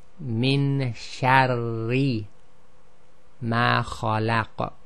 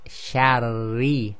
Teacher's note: Now what happens here is the point of articulation is the same, but the tip of the tongue lightly glides backwards towards the back of the mouth, and you sort of just skim the top of your mouth, and the back of the tongue never comes up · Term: light Ra